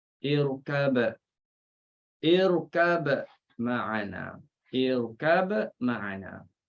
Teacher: Bila izhar kita tahulah di sini kalau nak izharkan kita kena bunyikan ba, qalqalahkan ba.